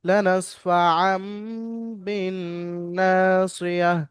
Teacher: এখানে যে কায়দাটি হলো, তাহলে মিম সাকিনের পরে হরফে ইকলাব থেকে বা এসছে, বা মিম সাকিন তানমিনের পরে, তানমিনের পরে হরফে ইকলাব থেকে বা এসছে। তো এখানে তানবিনকে মিমের দ্বারা পরিবর্তন করে পড়তে হবে। সেহেতু এখানে আর আন শব্দ উচ্চারণ হবে না, আম শব্দ মিমের সঙ্গে উচ্চারণ করে পড়তে বলেছে।